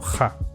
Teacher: en Galicia occidental existe lo que se llama la gheada, que consiste en pronunciar la ge como /ha/ o incluso /xa/